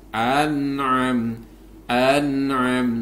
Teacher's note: nun sukun bertemu dengan Ain maka ini harus dibaca jelas